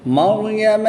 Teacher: را ساکن سے پہلے حرف پر زبر ہے تو را کو پر یعنی موٹا پڑھیں گے۔